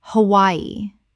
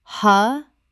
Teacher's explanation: 3 syllables with the W making a Y sound.